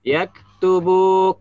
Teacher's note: kaf sama ya, seperti ta ya, sifatnya dihamas ya, mengalir napas dari dalam mulut.